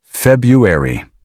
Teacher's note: Notice, the first R is usually silent. That makes the word much smoother.